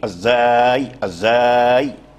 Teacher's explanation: الزاي حرف المجهور مستفل مرقق